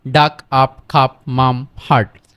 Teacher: ইউ এর উচ্চারণ যখন আয়ের মতো হয় তখন এটার উচ্চারণটা একটু ফাস্ট, মানে তাড়াতাড়ি করতে হয়